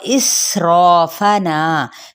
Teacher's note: सीन पे सीटी को वाज़े करेंगे